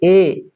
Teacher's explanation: मतलब ए जहां कंठ और तालु से उच्चारित होता है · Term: कंठ तालु